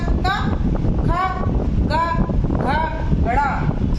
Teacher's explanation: हमारी जो आवाज निकल के आ रही है कहां से आ रही है कंठ से